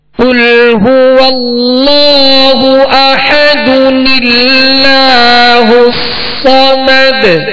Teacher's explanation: اور جو تنوین ہے دو پیش کی، اس کے جو تنوین کا نون ساکن ہے، کیونکہ تنوین جو ہے وہ نون ساکن ہی کی اس میں آواز ہوتی ہے، تو نون ساکن کو زیر دے کر ایک چھوٹا سا نون جو ہے وہ ملا کر اس کو پڑھیں گے